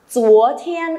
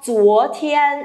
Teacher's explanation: âm chờ, không bật hơi nhé.